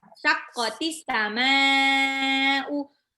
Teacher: Mimnya yang panjang, hamzahnya tidak.